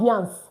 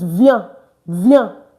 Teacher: The S is not pronounced.